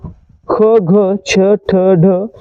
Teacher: जे इतर व्यंजने आहेत त्यांच्यामध्ये उच्चार करताना ह चा उच्चार देखील होतो म्हणून त्या व्यंजनांना देखील आपण महाप्राण व्यंजन म्हणतो अशी एकूण 14